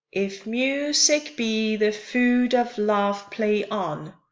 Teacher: So unstressed, stressed, unstressed, stressed, and so on. And if I count the number of iambs in this line, I have 5 iambs. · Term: iambic pentameter